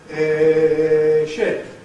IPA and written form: ʃɩp (ship)